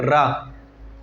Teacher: रा जो जीभ है वो लुढ़क करके आगे जाती है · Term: लुंठित